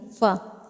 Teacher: مخرج نمبر 15، ثنایا علیٰ کا کنارہ اور نچلے ہونٹ کا اندرونی حصہ، جب یہ ایک دوسرے سے لگ جائے تو اس سے فا نکلتا ہے